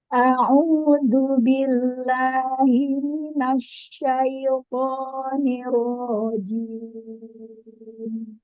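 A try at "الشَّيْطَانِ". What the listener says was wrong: Nah, to. Lagi tebalkan tonya. To.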